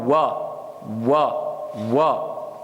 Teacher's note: Donc c'est en utilisant les 2 lèvres, en faisant un rond avec la bouche.